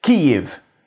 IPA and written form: ˈkiːjɪv (Kyiv)